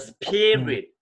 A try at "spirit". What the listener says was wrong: 피를 좀 더 강조해야 돼. 스피 풍성해. 억양이 높아. P가.